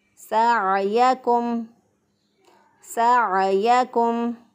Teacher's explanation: इन्ना सअयकुम, आइन को वस्ते हलक से अदा किया। गले के दरमियान से अदा होता है आइन, रगड़ खाती हुई आवाज़ में हम निकालेंगे सअयकुम, सअयकुम लशत्ता।